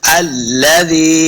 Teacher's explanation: जाल को नरमी के साथ पढ़ेंगे, जाल ज़ेर याज़ी, ये या मद्दा है, इसको 2 हरकत हमने लंबा करके पढ़ना है। · ख और क़ाफ दोनों हुरूफ़ मुस्तअलिया से हैं, हमने इनको मोटा करके पढ़ना है।